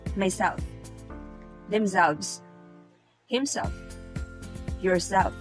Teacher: in the intensive reflexive pronouns the stronger accent also falls in the last syllable